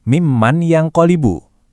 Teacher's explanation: Cara bacanya itu melebur. Jadi suara nun matinya itu kayak nyampur, masuk ke huruf setelahnya sambil didengungkan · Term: idgham bi ghunnah